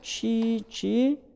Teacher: 얘네들을 만들어내는 방식은 다른 건 다 같고 뭐만 다르냐면 보이스만 다른 거야. 성대가 울리지 않거나 울리거나 그거만 다른 겁니다. 스즈, 시, 지.